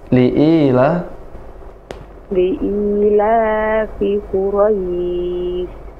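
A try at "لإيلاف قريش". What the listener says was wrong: Quraisy. Enggak kedengaran shinnya. Quraisy.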